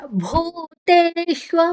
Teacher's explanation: ಭೂ ಮಹಾಪ್ರಾಣ ಮತ್ತೆ ದೀರ್ಘಾಕ್ಷರ. ತೇ ದೀರ್ಘಾಕ್ಷರ ತೇಯ ಜೊತೆ ಶು ತಗೊಳ್ಳುವ.